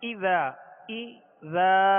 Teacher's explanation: زال کو ہم نے جو دراز کیا اس کے آگے الف ہے اور ایک الف کی مقدار اس کو کھینچ کر ادا کریں گے